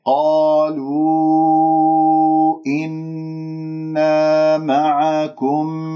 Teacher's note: لاحظوا كيف عندي حرف المد في قالوا والهمزة في إنا، مد جائز منفصل حركتين من الطيبة أربعة خمسة من الشاطبية. إنا، نون مشددة، الغنة